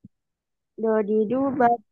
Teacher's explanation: Do-nya nggak boleh mantul ya. Jangan bab. Nggak boleh mantul. Bukan kol-kola.